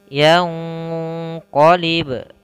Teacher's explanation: Kemudian yang qalib, pada lafal yang qalib ini ada huruf nun mati bertemu dengan huruf qaf. Apabila kita mendapati ada nun mati bertemu dengan huruf qaf, ini harus kita samarkan nunnya ke huruf qaf, yang mana ini ikhfa-nya adalah ikhfa ab'ad, itu ya, ikhfa ab'ad.